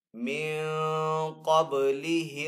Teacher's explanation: نون ساکن کے بعد قاف حروف اخفا میں سے تو یہاں پہ اخفا والا غنہ کریں گے، با حروف کلکلہ میں سے تو با کے اوپر کلکلہ کریں گے۔